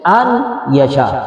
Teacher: نون کا یا میں ادغام کریں گے، پھر با غنہ یعنی غنہ کے ساتھ ادغام